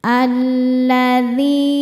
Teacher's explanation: alif lam menghadapi huruf syamsiyah yaitu lam, maka alif lamnya tidak dibaca. Ya. Alladzi dzi hukumnya mad thobi'i zohiri sebab ada ya sukun sebelumnya kasrah. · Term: alif lam syamsiyah